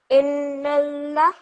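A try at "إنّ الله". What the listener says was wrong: Okay, this noon over here, you also have to produce that nasal sound. So you have to say Innallah. Hold that noon sound in your nose for around 2 seconds, okay?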